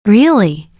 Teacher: Really? Curious rising tone.